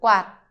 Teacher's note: Basically, shape the T, but don't pronounce it.